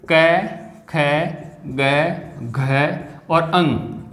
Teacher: इनका उच्चारण स्थान कंठ है